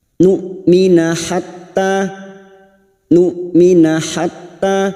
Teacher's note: saat disukun bunyinya nmina harus dibaca jelas dan tegas karena huruf hamzah memiliki sifat jahr dan syidah yaitu tertahannya nafas dan suara